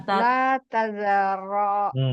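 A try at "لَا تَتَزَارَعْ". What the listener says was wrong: Kurang satu, kurang satu taknya. La, la tatazaro.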